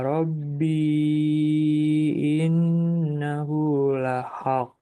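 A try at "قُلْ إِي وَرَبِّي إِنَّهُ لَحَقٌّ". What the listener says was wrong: Dengungkan lagi. Innahu lahaq.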